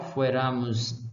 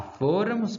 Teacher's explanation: O caso da primeira pessoa do plural, fuéramos passa a fôramos. Olha aí o acento, saiu do ra. Ou seja, de paroxítona para proparoxítona